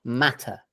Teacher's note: so the vowel in matter in the first syllable is ah. Okay, this is very common, the short vowel ah.